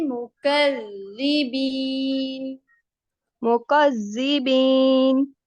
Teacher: मुकज़्ज़ा में सीटी वाली आवाज नहीं आएगी